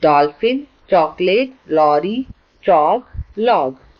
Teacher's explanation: 'ओ' या 'औ' ध्वनि न तो हिंदी की 'ओ' और 'औ' है, और न ही यह 'आ' है। इसका उच्चारण इन सभी से अलग है, जैसे 'au', जो 'aa' और 'o' के बीच आता है।